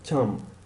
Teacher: The p at the end of champ. It's not voiced.